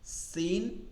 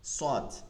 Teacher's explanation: কারণ মাখরাজ সেইম একই মাখরাজ শুধুমাত্র শুধুমাত্র চিকন আর মোটা তফাত সিনটা চিকন যেমন সাদটা মোটা